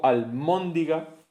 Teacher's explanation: almondiga con ese sonido bilavial, pero nasal también sonoro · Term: asimilación